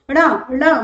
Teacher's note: साथ ही साथ इसमें से वायु ण ण वायु कम, ध्वनि का निष्कासन अधिक होता है, नासिक मार्ग से ध्वनि प्रतीत होती है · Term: नासिक्य